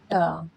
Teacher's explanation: हिंदी में रेट्रोफ्लेक्स sound use होते हैं टंग का कर्ल करके